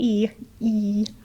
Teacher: your tongue's kind of squished up close to the front and up against your teeth